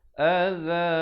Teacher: za di hujung lidah diwaqafkan dengan 2 harakat.